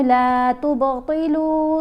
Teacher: یہاں ہم نے با کے اوپر کلکلا کر کے پڑھا.